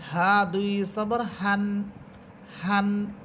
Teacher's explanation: এটা একেবারে বাতাস ছেড়ে দিয়ে পড়বেন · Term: গুলহা